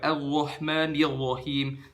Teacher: pembacaan huruf ro menggunakan pangkal lidah alias lidah bagian belakang